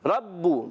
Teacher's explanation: रा पर ज़बर है, रा को पुर पढ़ेंगे। रब्बू, बा मुशद्दद ज़रा रुक कर अदा करेंगे।